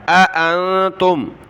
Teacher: اانتم، یہ لفظ پیچھے گزرا ہے، حمزہ زبر آ، دوسری حمزہ کو نون کے ساتھ ملایا